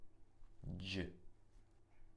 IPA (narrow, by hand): d͡ʒ